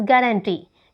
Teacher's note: गारंटी में जो accent लगी है वो थर्ड सिलेबल पर लगी है